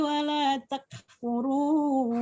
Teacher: Dengan ayat 152 dikata 152 iya, dikata wala takfurun. Takfurun ya, huruf kafnya harus diberikan sifat hams.